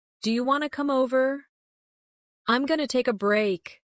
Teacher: Native speakers often drop sounds when speaking quickly. For example, want to becomes wanna. Going to becomes gonna. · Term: Casual pronunciation